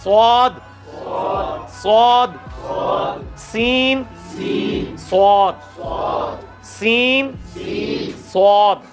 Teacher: سین کی آواز کو موٹا کیا سواد بن گیا · سین کا مخرج اور سواد کا مخرج ایک ہے صرف اس کو موٹا کر کے پڑھنا ہے. اس میں بھی سی ٹی کی آواز آئے گی.